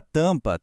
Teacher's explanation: O m ali não tem aquele som de consoante isolada. Assim como o n, ele serve estritamente para avisar que a vogal anterior precisa ser anasalada, formando aquele som de ã. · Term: efeito nasal